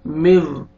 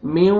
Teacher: नोज में sound लेके जाएंगे और लिप्स को राउंड में लेके जाएंगे, वाव अच्छी तरह अदा हो